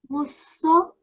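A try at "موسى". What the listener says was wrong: So what we've got to do is we've got to make this alif sound as it should be made. Open up your mouth and make your throat all nice and clear. Like, ah.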